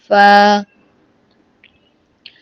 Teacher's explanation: اوپر والے 2 دانتوں کا سرا اور نیچے کے ہونٹوں کا اندرونی حصے سے فا ادا ہوتا ہے